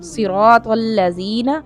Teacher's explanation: موٹا پڑھیں گے، را اس کو بھی موٹا پڑھیں گے، طا کو بھی موٹا پڑھیں گے، صراط الذین، اگر کسی نے پڑھ دیا صراط الذین، سرا سین بنا دیا صاد کو تو غلط ہو جائے گا، صراط الذین پڑھ دیا یہ غلط ہے، صراط الذین یہاں پر ذال ہے، اس کو زا نہیں پڑھنا